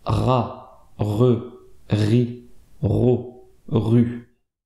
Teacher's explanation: vous voyez que le son vient bien de la gorge, que la langue ne bouge pas. Si elle bouge, c'est que le R n'est pas prononcé correctement.